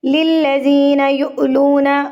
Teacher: حمزہ کے اوپر جب یہ جزم آ جاتی ہے تو جھٹکا دے کے پڑھا جاتا ہے اس کے پیچھے والے حرف کو۔